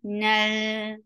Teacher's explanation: Nal, for fatha open your jaws. As soon as you'll touch lam, you will give tawassut, and tawassut is a medium flow of sound. Nal, this sound is tawassut.